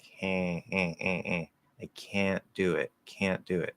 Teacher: So what you do for that is you say the k, you say the a, right? But instead of closing up into n, you just make the a go through the nose. Now, because we don't actually have nasal vowels in English, this tells the ears of the listener, hey, there's an N there, even though you're not making an N. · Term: nasalize a vowel